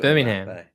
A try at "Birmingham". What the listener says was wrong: Yeah, you're over syllabbling it. Birmingham, mate. Birmingham. Birmingham. You're adding a syllable that isn't there.